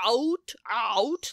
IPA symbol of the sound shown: æut